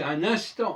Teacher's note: Un instant, le N du 1, on ne prononce pas, le N du IN, on ne prononce pas, et le N de ANT, on ne prononce pas